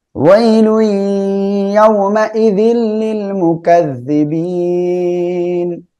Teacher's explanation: মাইযিল তানবীনের পরে ইদগামে বেলাগুন্নার অক্ষর লাম আসছে, গুন্না বাদে মিলিয়ে পড়বো।